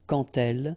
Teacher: when you will have this d, you will phonetically pronounce it like t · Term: les liaisons